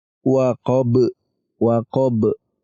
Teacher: Ba-nya kita sukun dulu lalu kita pantulkan seperti kita membaca ba yang kedua. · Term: qalqalah kubra